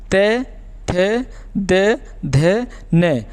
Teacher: जब हम इनका उच्चारण करते हैं तो हमारे दांत के जो मतलब ऊपरी जबड़ा होता है उससे हमारी जीभ टकराती है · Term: त वर्ग